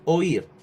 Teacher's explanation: las sílabas fue ir vocal abierta y vocal cerrada acentuado oír vocal abierta y vocal cerrada acentuada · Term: hiato